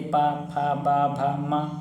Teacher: बिना मिले ओठ के बोल ही नहीं सकते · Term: ओष्ठ